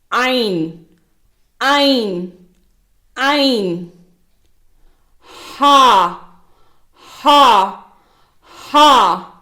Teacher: இவை தொண்டையின் நடுப்பகுதியில் இருந்து உச்சரிக்கப்படுகின்றன